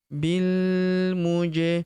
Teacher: Huruf ja berharokat sukun kita pantulkan atau kita qalqalahkan.